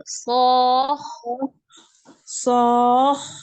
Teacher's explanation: Jadi diangkatnya suara itu pas masuk ke kho yang sukun. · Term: nabar